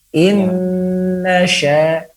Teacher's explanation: secara bersamaan keluar daripada lidah menempel gusi dan juga pada hidung 50% 50%. Jangan hanya terfokus daripada lidah saja.